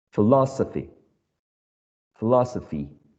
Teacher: philosophy has four syllables and the stressed syllable is the second one